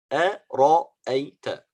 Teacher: Ra, the only heavy letter here is a ra. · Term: تفخيم